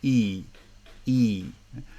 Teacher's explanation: in the ipa we use the two dots to represent longer vowel but in fact there is a slight movement of the tongue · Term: long vowels